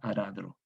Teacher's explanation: En el español antiguo, va a quedar aradro, porque la A abierta queda A como átona y en la tónica A también queda A, aradro. Bien, esta consonante T se sonoriza en D, a pesar de que no está en posición intervocálica